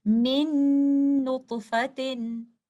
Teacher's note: ऐसी सूरत में जो पहला वाला नून साकिन आपको नजर आ रहा है, ये पूरा का पूरा मर्ज हो गया है बाद में आने वाले लेटर नून के अंदर, और आपको जो गुन्ना की आवाज भी आ रही है वो पहले वाले लेटर नून की नहीं बल्कि दूसरे वाले लेटर नून की है, क्योंकि इस सूरत में साकिन लेटर नून पूरा का पूरा मर्ज हो गया है मुतहर्रिक लेटर नून में और उसकी कोई भी सिफ्त बाकी नहीं रही, तो इसको हम इदगाम कामिल या कंप्लीट मर्जिंग कहते हैं।